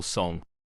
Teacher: A voiced velar nasal